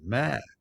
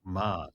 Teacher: It's only the tone and some slight difference in pronunciation that differentiates the words. Mother has a rising tone, ma, and dog has a falling tone